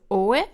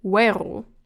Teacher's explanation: So oe and on its own is pronounced as two syllables, oe, but as soon as you put something behind it, you have the oe becoming we. So oe, but weru.